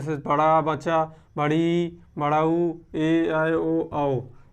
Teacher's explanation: इनको बोलने में दो मात्रा का समय लगता है इसलिए दीर्घ स्वर होते हैं